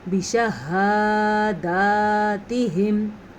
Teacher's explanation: شین پہ زبر ہے، اس کو لمبا نہیں کرنا، ہا اور دال دونوں کو لمبا کرنا ہے کیونکہ دونوں کے اوپر کھڑی زبر ہے